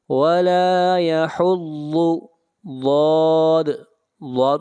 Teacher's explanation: ضاد کو موٹا پڑھیں گے، ضاد حروف مستعلیہ میں سے ہے · یہاں پر الف مدہ ہے، لام کو کھینچ کر پڑھیں گے ایک الف کے برابر